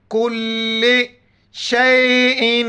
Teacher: علی کل، کل، بعض پڑھتے کلی، کلی نہیں ہے، کل لام زر لے، کل شیئن، یہاں پر ناک میں آواز پیدا کریں گے، تنوین ہے.